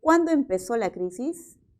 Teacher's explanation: Siempre se va a entender como una pregunta por la palabra cuándo. Por lo tanto, su tono final es descendente.